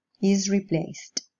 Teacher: The stem in this case finishes with a voiceless alveolar fricative sound. So the ed here is pronounced with a voiceless alveolar plosive